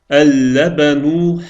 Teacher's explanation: Və buna görə də biz əl artiklının ləmin oxumadıq. Birbaşa ləbən sözünün ləminə keçdik.